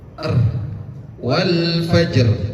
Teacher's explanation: Habis itu timbulkan takrir. Takrir itu salah satu sifat yang dimiliki ra. Takrir itu pengulangan.